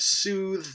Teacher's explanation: that has a final voiced fricative